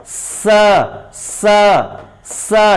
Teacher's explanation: Sa, dental sound, not palatal sound.